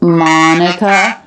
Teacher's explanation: so Monica tagged on at the end it is stress but because he's making his intonation go up the stress goes down up instead of up down like it normally does